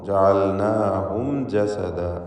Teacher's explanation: പദത്തിൻ്റെ അന്ത്യത്തിൽ സാക്കിനത്തായ മീം വന്നിട്ടുണ്ട്. ഇൽഹാർ ഷഫവി നൽകി മീമിനെ മണിക്കാതെ വെളിവാക്കണം